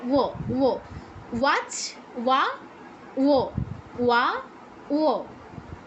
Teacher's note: এক্ষেত্রে কি হচ্ছে, উপরের পাটির দাঁত নিচের ঠোঁটে লাগছে।